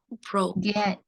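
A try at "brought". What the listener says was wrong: G-nya nggak dibaca. Cara bacanya jadi ini cara bacanya.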